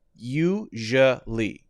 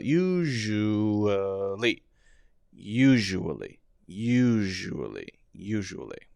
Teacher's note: And this is confusing because actually it's not the S-H by itself. It's zh.